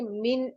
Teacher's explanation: نون ساکن کے بعد حروف حلقی میں سے کوئی بھی حرف آ جائے، جیسے یہاں پر حمزہ آ رہا ہے تو وہاں پر ہم غنہ نہیں کرتے ہیں. ہم اس کو جلدی سے پڑھیں گے، من پڑھیں گے.